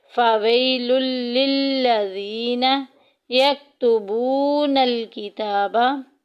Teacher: यक्तुबू में देखें वाव साकिन पीछे पेश वाव मद्दा का कायदा जारी हो रहा है, एक अलिफ के बराबर लंबा करेंगे।